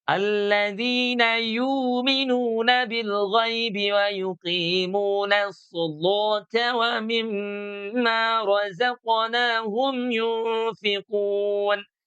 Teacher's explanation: Nasolata, walaupun ada juga tadi saya contohkan ya, dalam riwayat Imam Warsh An-Nafi' ya, itu dia huruf lamnya ini terpengaruh oleh huruf sod ya. Karena huruf sodnya adalah huruf isti'la, maka dia ikut menebalkan huruf setelahnya. Maka huruf lamnya ada juga yang dibaca jadi tebal.